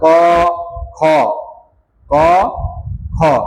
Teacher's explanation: ক খ, ক খ, তাহলে গলাটা কিন্তু কম কাঁপতেছে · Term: অঘোষ